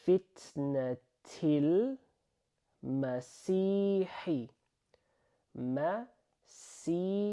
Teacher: This is not the heavy S sound, okay? We just say it like C. So this, like, if you were to just look at this here, this is exactly how you pronounce pretty much the English word to see something, okay?